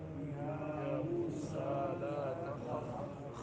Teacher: خا حلق کے اس حصے سے جو منہ کے قریب ہے